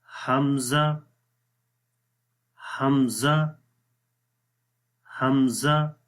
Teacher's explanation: हमज़ा का मखरज गले का सबसे नीचे वाला हिस्सा है, जिसको बॉटम ऑफ द थ्रोट भी बोलते हैं, यानी कि हलक का सबसे नीचे वाला हिस्सा जो ये आपको नज़र आ रहा है।